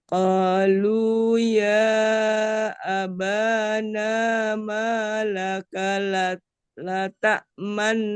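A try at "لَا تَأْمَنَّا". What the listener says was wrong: Ah, laknya masih nanggung nih. ta manna man. Jadi pas man ini langsung monyong. Manna.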